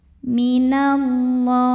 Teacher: alif lam menghadapi huruf syamsiyah yaitu lam, maka alif lam jangan dibaca ya, dilewatin. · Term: alif lam syamsiyah